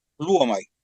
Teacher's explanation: Es un diptongo, la O con la U se pronuncia como U